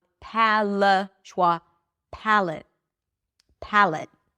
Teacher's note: It's a light L, although it's darker for many speakers.